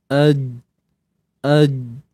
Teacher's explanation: sifat syiddah ni tertahan suara